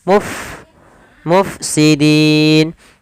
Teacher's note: Fa sukun alirkan nafas kita